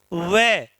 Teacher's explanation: व मतलब दांत से बोला जाएगा और ओट से भी बोला जाएगा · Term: दंतोर, दंतोष्ठ वर्ण